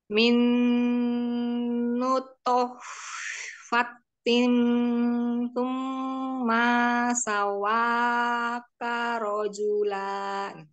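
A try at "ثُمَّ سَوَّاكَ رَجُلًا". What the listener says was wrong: Ya, Umi, summa sawwa, maknya jangan dipanjangin ya. Sawwa, naikkan suaranya, naber. Sawwaka rajula. Dari summa mi. Dari summa sawwa. Tumma sawwaka. Jangan ditabrak-tabrak. Kalau mau berhenti, sukunkan huruf terakhirnya.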